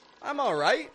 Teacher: And peak up your tone on the ite.